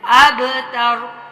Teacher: شانئک ہول، اب کلکلا کرنا ہے، با پہ حروف کلکلا میں سے ہے تو اس پہ کلکلا کرنا ہے